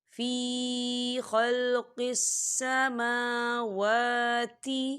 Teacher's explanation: فی یا ساکن سے پہلے زیر ہے تو یہاں پر یا مدہ ہوگا، تو ہم اسے دو حرکت کے برابر کھینچے پڑھیں گے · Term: کھڑی حرکات